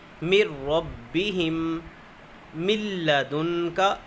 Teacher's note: لام اور را جب آئیں گے نون ساکن اور تنوین کے بعد تو وہاں پر غنہ نہیں ہوگا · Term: بغیر غنہ